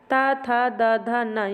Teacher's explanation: ऊपरी दांतों के जो निकट से निकलते हैं उन्हें दंतय कहते हैं